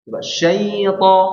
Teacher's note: lin diberikan dua harakat. Syai diperlambat dua harakat.